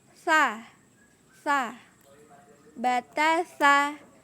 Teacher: Tempat keluar huruf sa yaitu ujung lidah menyentuh gigi seri atas. Nah, jadi harus ditempelkan ujung lidah ke gigi seri atas.